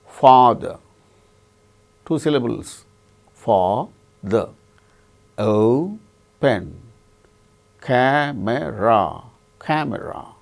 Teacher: In the case of all these three words, the first syllable is stressed.